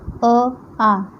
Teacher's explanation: तो अ आ, जब मैंने अ और आ बोला तो लेटर डायरेक्ट गले से आ रहे हैं, उसका हमारी मुंह में या हमारी टंग जो है वो किसी भी पार्ट को टच नहीं कर रही है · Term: कंठ